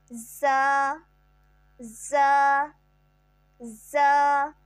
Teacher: زبان کی نوک اور اوپر نیچے کے دانت جب آپس میں ملیں تو اس سے زا ادا ہوگا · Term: سیٹی والے حرف